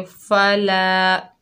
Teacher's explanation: लाम के ऊपर ज़बर है, आगे अलिफ खाली है, ये अलिफ मद्दा है, एक अलिफ की मिक़दार खींच कर पढ़ेंगे